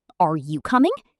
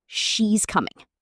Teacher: Voice goes up at the end of yes no questions. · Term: rising intonation